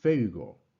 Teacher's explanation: la fuerza de voz, el acento tonal va sobre la epsilon, no obstante, el acento gráfico lo vamos a escribir sobre la Y.